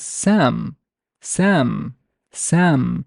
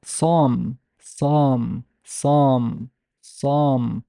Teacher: the velarized or velar consonants, have an effect on the vowels. Especially, it's more pronounced on the long vowel ah.